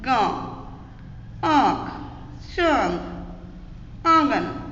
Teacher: इनका उच्चारण करते हुए जो श्वास वायु है वो हमारी नाक और गले दोनों को स्पर्श करके निकलती है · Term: अनुनासिक